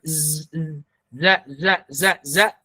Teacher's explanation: Ya, suaranya mengalir tapi udara tertahan. Ya, bunyinya tipis, kemudian ada bunyi desisan z. Ya, seperti suara lebah ya. Suara lebah itu kan z, za. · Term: huruf zai